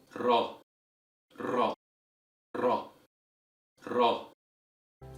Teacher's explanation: So to recap the whole thing, the tip of the tongue is curved inward in a relaxed manner as it slightly touches the end of the gum ridge. The air then is blown at the tip of the tongue as it passes through the gap between the tip of the tongue and the gum ridge, with the tongue flapping · the air blown passes through the tip of the tongue, then the tongue tries to block the flow of the air, then air passes through again, and this process is repeated many times quickly, giving us the flickering sound of the letter Ra.